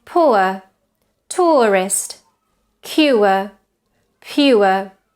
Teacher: It starts at an o position and ends with a schwa. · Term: diphthong ur